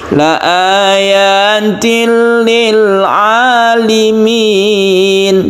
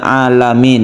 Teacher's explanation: Jadi lamnya ini berharokat kasroh, berbunyi alimin, bukan alamin ya. Apabila kita memberikan harokat ini sebagai harokat fathah untuk lam, maka sangat jauh maknanya.